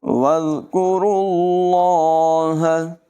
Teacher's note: ذال کو بغیر سیٹی کے پڑھیں گے، وز نہیں پڑھیں گے